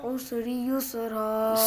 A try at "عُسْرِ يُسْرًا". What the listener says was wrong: سین پہ آواز ہل رہی ہے بیٹا.